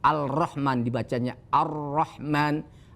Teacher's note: Ar-Rahman, padahal ada tulisan lamnya. Al-Rahman dibacanya Ar-Rahman, alif lamnya tidak terbaca. Itulah yang disebut alif lam syamsiyah.